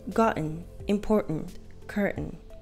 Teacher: It doesn't really matter whether you have one or two vowels between T and N. We usually cut them out. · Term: stop T